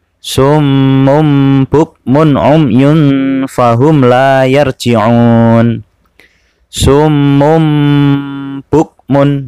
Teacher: Tanwin itu ada fathah tain seperti ini, kasroh tain seperti ini, domah tain seperti ini, bertemu dengan huruf ba, baik dalam satu kata atau dua kata, maka cara membacanya nun sukun atau tanwin dibalik menjadi suara mim dengan berdengung. Lama dengungannya kira-kira 1,5 alif atau 3 harokat. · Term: Iqlab